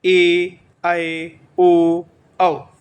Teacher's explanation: दीर्घ स्वर या फिर गुरु स्वर, इनको उच्चारण करने में 2 मात्रा का समय लगता है